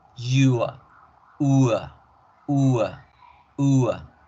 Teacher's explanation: El diptongo U con schwa, que aquí la schwa va a seguir tomando el sonido de la A.